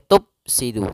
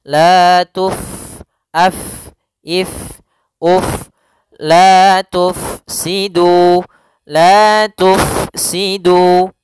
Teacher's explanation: Huruf Fa sukun tidak boleh dibaca dengan Pa no tidak boleh ya harus dibaca dengan adanya aliran tidak boleh